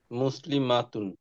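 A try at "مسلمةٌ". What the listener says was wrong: Good.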